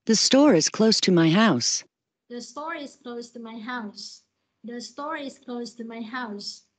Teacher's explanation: ngữ điệu đi xuống thì các bạn có thể nhớ huyền hoặc nhớ nặng hơn cho cái từ cuối cùng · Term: falling intonation